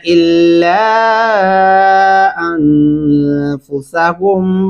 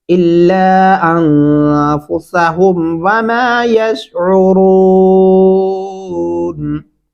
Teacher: यहाँ लाम के ऊपर दो अल्फ़ी मद्दा है, इल्ला अनफुसहुम नहीं करना।